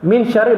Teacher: Min syarrin bukan min syarrin. Baca syarrin memang tebal sebab sebelumnya baris atas.